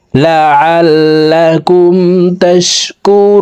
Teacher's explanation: রু এখানে 3 আলিফ টেনে নুনকে সাকিন করে ফেলবো, কারণ পেশের বাম পাশে জজমালা ওয়াও মাদার হরফ। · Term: মধ্যে আরজি